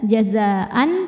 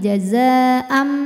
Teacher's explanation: bunyi tanwin diganti bunyi mim sukun. Jadi bukan jazaan tapi jazaam m ya.